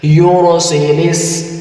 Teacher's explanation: تو یہاں پر ہم لام کو سین کے ساتھ ملا کر پڑھیں گے۔ سین کے اوپر شد ہے تو ہم نے لام کو سین کے ساتھ ملا کر پڑھنا ہے۔